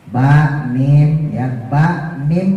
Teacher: kalau nempel jadi tap ini buat buat mim itu bu ya buat ba buat mim itu bibirnya nempel ba mim ya Ba mim nah ini bibir dua-duanya nempel Tapi